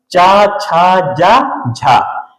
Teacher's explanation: इनके उच्चारण में ताल में जीहवा का स्पर्श होता है, संघर्ष होता है। तो ये स्पर्श संघर्षी व्यंजन कहते हैं।